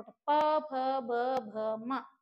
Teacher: वर्ग वाला वर्ग जो है वो आपका ओस्ट ओस्ट होते है हमारे होठ होठों को टच कर रहा है ऐसे चिपक रहे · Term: प वर्ग